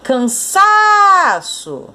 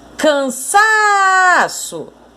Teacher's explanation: o sa é a sílaba tônica, a sílaba mais forte